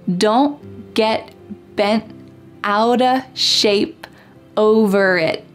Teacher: All of these T's are what we call stopped T's.